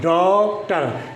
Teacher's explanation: आगत में ए और ओ के बीच की मात्रा होती है और ये ना तो पुरी तरह से ए होती है ना ओ होती है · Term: आगत मात्रा